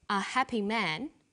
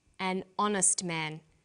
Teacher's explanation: So we say a happy man, but an honest man. The H is not pronounced, so honest sounds like it starts with a vowel.